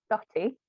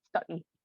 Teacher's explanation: It's said like stotty because of the glottal stop.